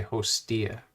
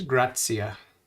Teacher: The T is preceded by an S, so you don't follow it by an S sound as you would in grazia, where the S sound follows the T sound.